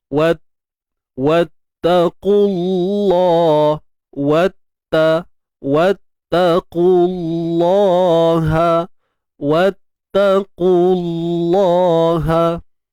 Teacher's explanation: Kalimah Allah ni kita kena tebalkan. Tebal sebelumnya baris depan.